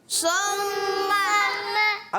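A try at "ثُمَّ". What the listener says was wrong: अब देखो किसी की एक आवाज़ आई कि सुम्मा, सा है प्यारे बच्चों, क्या है? सा, सा। हमने सीन नहीं पढ़ना, सा पढ़ना है।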